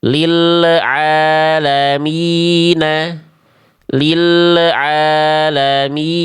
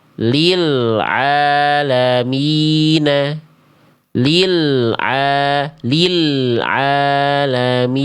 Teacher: Karena lamnya belum beres dilafalkan, sudah dilepas makhrajnya. Harusnya tunaikan dulu lamnya, masuk baru baca ain.